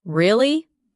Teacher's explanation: when you ask a question like really, your voice goes up slightly at the end.